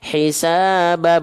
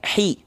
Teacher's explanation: Rendahkan rahang bawahnya. Ya, jelas bunyi vokalnya i, jangan jadi he